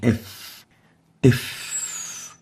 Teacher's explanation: It's categorized as a labiodental because it articulates by bringing the lower lips with the teeth, and it is the F.